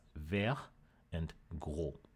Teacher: The D and the S were lost at the end of the word